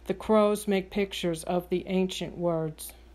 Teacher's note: If you hear them as slightly more stressed, then the syllable or word in the middle will be unstressed. I don't stress make because to my ear, crows and the first syllable of pictures are stressed more than make.